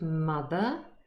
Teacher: For example, in the word mother, here's the transcript, mother just ends in a schwa, the r is not pronounced for non-rhotic speakers. However, if there is a word following, because mother is usually within a sentence, and if this next word that follows mother starts with a vowel sound, we do pronounce the r, even non-rhotic speakers.